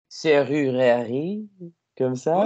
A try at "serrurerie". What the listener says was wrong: Ouais.